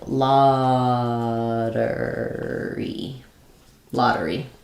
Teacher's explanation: we do use the flap T because the first syllable is stressed, so that's a very common time that we would use the flap T when T is in the middle of words and it's followed by an unstressed syllable.